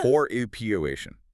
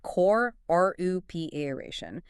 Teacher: Let's practice that word stress again. It's on the second syllable, right?